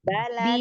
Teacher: Balad, jangan ada hamzah qalqalahnya.